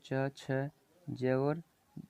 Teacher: च, छ, ज और छ, ये जो चार वर्ण है साथियों इनको हम स्पर्श संघर्षी कहते हैं।